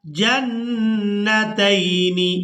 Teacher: نون مشدد پر غنہ کریں گے